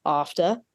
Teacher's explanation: there's no r on the end of that